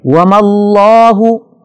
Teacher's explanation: لفظ اللہ سے پہلے میم پر زبر ہے لہذا اس کو ہم نے موٹا پڑھنا ہے